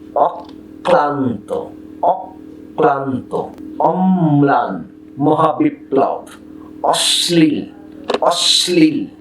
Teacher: পদের মধ্যে কিংবা অন্তবর্ণের সঙ্গে ল ফলা যুক্ত হলে বর্ণটির উচ্চারণ দ্বিত্ব ঘটে এবং লয়ের উচ্চারণও অবিকৃত থাকে